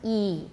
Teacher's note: E is the highest, high front, E.